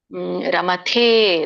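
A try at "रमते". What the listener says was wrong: ರಮತೆ ಮತ್ತೆ ದೊಡ್ಡದು ಹೇಳಿದ್ರಿ ಸಣ್ಣತ ಹೇಳಬೇಕು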